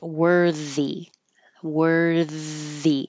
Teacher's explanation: it's a voiced th so I made it bold worthy worthy keep the air flowing